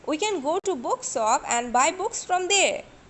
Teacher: So bookshop is again new idea, so falling tone is used here.